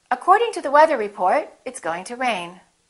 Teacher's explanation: rising intonation when you're not finished speaking and you have something more to say and then falling intonation at the end of your sentence